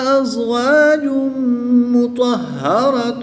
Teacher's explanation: 2 پیش کی تنوین کے بعد میم حروف یرملون میں سے ہے تو یہاں پر ادغام مع الغنہ ہوگا، غنہ کر کے پڑھیں گے